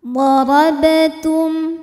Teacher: Ada hukum izhar syafawi sebab mim sukun menghadapi huruf selain mim dan ba yaitu huruf fa. Cara baca mim sukunnya adalah dibaca dengan idhar atau jelas.